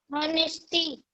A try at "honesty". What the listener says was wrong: अब बेटा आप हॉनेस्टी बोल रहे हैं. It's means wrong. आप प्रोनाउंसिएशन रॉन्ग कर रही हैं. बिकॉज ऑनेस्टी में एच साइलेंट होता है. हम ऑनेस्टी बोलेंगे, हॉनेस्टी नहीं.